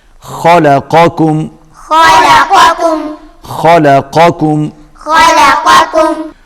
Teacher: پہلا قاف موٹا پڑھا جائے گا اور اس کے بعد جو دوسرا کاف ہے وہ باریک پڑھا جائے گا